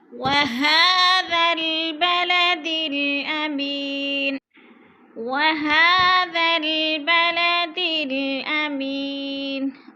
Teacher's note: वहा के ऊपर खड़ी ज़बर है, खड़ी ज़बर को एक अलिफ के बराबर खींच कर पढ़ना है।